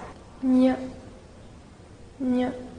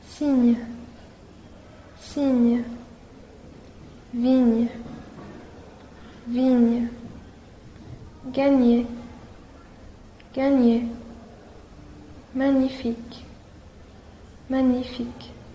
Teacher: 鼻腔辅音你。在发这个音的时候，请大家 将舌尖抵下齿和下齿龈，舌面中部抬高，接触硬腭形成阻塞，软腭下降，震动声带，让气流从鼻腔中流出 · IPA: ɲ